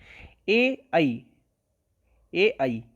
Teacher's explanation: ए आई होते हैं कंठ तालु, कंठ तालु।